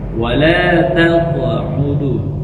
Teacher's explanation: Yang pertama, qalqalah wala taq'udu. Qalqalah, pantulkan qaf di makhrajnya, yaitu aqsal lisan, lidah pangkal dengan langit-langit bagian belakang, langit-langit lunak, halakul lahmi. Nah, jadi tempelkan dan keluarkan di belakang.